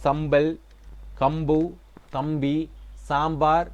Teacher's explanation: மகர மெய்யை அடுத்து வருகின்றப்ப சம்பல் கம்பு தம்பி சாம்பார் என்ன சோம்பல் இப்படி எல்லாம் எங்களுக்கு ப மாதிரி ஒலிக்கும்